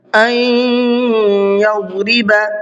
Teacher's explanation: نون ساکن کے بعد میں یا ہے، جو ادغام یرملون کا قاعدہ ہے، یہاں پر تھوڑا سا غنہ کر کے پڑھنا ہے۔ این یضرب، ضاد کو منہ بھر کے پڑھنا ہے۔